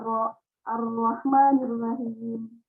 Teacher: Jadi yang bergetar itu lidahnya, bukan bibirnya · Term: takrir